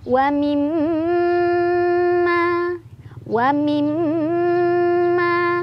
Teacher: Ditahan dulu bacanya sampai kerasa ke hidung, hidungnya bergetar halus baru dilepas. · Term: gunnah musyaddadah